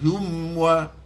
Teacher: izhar yang perlu dikuatkan maksudnya tekan bibir mulut kita dengan kuat tanpa ghunnah · Rahimna hum wa mim dengan waw di situ kita panggil dia izhar syafawi, cuma izharnya disebut sebagai akada wa asyadu izharan, izhar yang perlu dikuatkan, maksudnya tekan bibir mulut kita dengan kuat tanpa gunnah